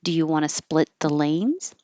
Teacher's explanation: It's a yes no question. So, the whole thing goes up.